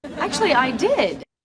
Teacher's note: 실제 발음 교회도 K와 T 발음과 She 발음이 있어서 이 T하고 She 발음이 붙으면서 actually 이렇게 발음할 거라고 생각하지만 실제 자음 세 개가 연결되기 때문에 중간에 있는 이 T 발음의 음가는 발음나지 않는 경우가 훨씬 더 많습니다. 그래서 실제 발음은 actually가 되는 거죠.